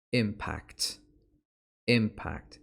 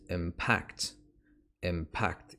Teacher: When it's a verb, the pronunciation is impact. Impact. It's on the second syllable.